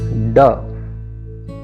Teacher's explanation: यह मूर्धन्य ध्वनि है। इसके उच्चारण में अंदर से आती हुई वायु जीभ की नोक द्वारा मूर्धा को स्पर्श कर रुकती हुई बाहर निकल जाती है।